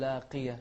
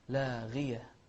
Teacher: غين مفخمة لكنها مكسورة هتكون في أدنى مراتبها، أدنى مراتب التفخيم